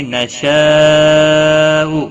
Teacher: نشاء بڑی مد ہے، 3 سے 5 الف کے برابر کھینچ کر